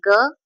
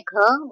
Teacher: सघोष में अल्पप्राण है ग, महाप्राण है घ